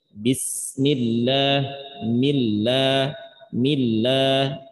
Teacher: Dan kebetulan lam itu memiliki sifat at-tawassut di antaranya. Jadi suaranya antara tertahan dan mengalir.